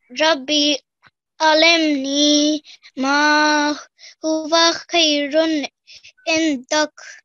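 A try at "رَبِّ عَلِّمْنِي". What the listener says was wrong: One thing, lam has shadda on top, so we have to emphasize this letter. So, Rabbi alimni, not alimni, okay? We've emphasized on the lam. Rabbi alimni.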